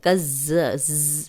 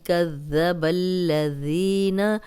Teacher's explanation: سیٹی کی آواز نہیں آئے گی، سیٹی کی آواز آ جائے تو کز، یہ ساؤنڈ آئے تو یہ زا بن جائے گا اور ترجمہ بدل جائے گا۔